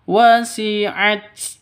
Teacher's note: taknya ya harus ada hamesnya karena huruf hames ada nafasnya yang keluar